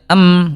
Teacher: huruf mim dia tawasut sedikit mengalir